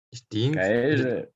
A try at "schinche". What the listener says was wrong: Allora, gli stinchi, i polpacci e botasei, e va bene, ma gli stinchi si chiamano schinche. Schinche, con la C. S-C-H, schinche.